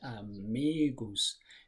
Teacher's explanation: The stress is on the second syllable. It has 3 syllables, amigos. The stress is on the second one, amigos.